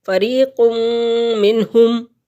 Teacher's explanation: اور یہاں نون ساکن کے بعد ہا حروف حلقی میں سے آ گیا تو اظہار کریں گے